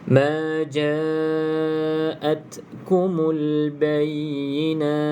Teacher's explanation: kena ada bunyi angin ta ni, tapi jangan berlebihan sampai nak bunyi huruf sin pula. Itu dah ada bunyi sin. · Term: Hamas